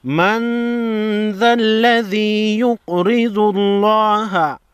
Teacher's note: لفظ اللہ لام سے پہلے پیش ہے، لفظ اللہ کی لام کو موٹا پڑھنا ہے